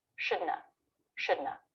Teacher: learn the negative too should not have americans will say this drop the word not and just make an n sound